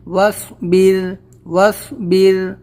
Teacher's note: اور یہ الف بیچ میں نہیں پڑھیں گے، جزم ہے تو ہم ملا دیں گے ڈائریکٹلی واو سے